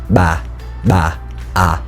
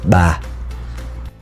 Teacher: in contrast to the B sound in English this is made like deeper in your throat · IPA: ɓ